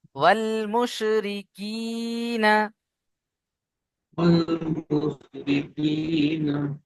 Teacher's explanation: ওয়াও লাম জাবার ওয়াল, এখানে কোনো টান হবে না।